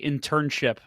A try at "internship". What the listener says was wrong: You put the wrong emphasis on the wrong syllable. Internship, but you can physically say internship, right?